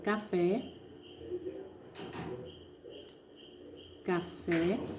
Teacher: o fé ela é pronunciada com mais força, com mais intensidade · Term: sílaba tônica